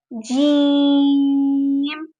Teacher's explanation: اوپر کا تالو کے درمیان اور زبان کے درمیان سے ادا ہوگا